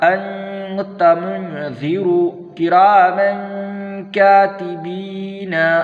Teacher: محترم سامعین و ناظرین، ہم نے کل تختی نمبر 10 اخفا پڑھا تھا اور اس کے اندر بتایا تھا کہ تنوین اور نون ساکن کا قاعدہ نمبر 2، تنوین اور نون ساکن کے بعد حروف اخفا میں سے کوئی بھی حرف آئے تو نون کی آواز کو ناک میں چھپا کر پڑھیں گے، اور اس کو چھپا کر پڑھنے کو ہی اخفا کہتے ہیں۔ اخفا کی مقدار 1 الف ہے۔